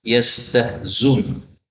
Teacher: seperti biasa hamzahnya bisa dihapus menjadi yastahzun